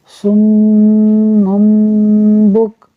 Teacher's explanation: اب من جو تھا وہ مم ہو جائے گا با کی وجہ سے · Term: اقلاب